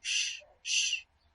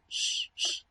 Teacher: en vez de pronunciar una percusiva sonora, lo que hago es una fricativa áfona, es decir, algo como sh, sh, ápico alveolar, fricativa áfona.